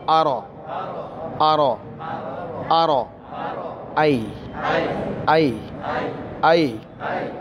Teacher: অনেকে বলে আরাইতাল্লাজি এটা হবে আর আই সবাই বলি আর আর রটাকে মোটা করে পড়তে হবে পুর করে